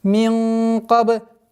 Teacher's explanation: Мин твердая ихфа. В размере 2 огласовок удерживаем назализацию